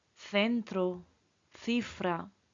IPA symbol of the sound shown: θ